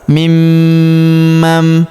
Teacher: Nun sukunnya berubah menjadi mim ya. Bukan lagi dibaca mimman mana tapi mim mam.